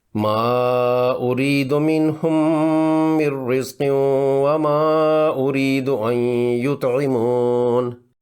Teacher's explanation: اس آیت میں منہم کی میم ساکن ہے، اس کے بالکل ساتھ میں من کی میم مشدد ہے، تو ساکن میم کا مشدد میم میں ادغام کر کے اس کو غنہ کے ساتھ پڑھیں گے